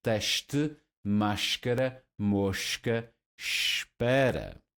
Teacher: S is coming before voiceless consonants and produce the voiceless sh.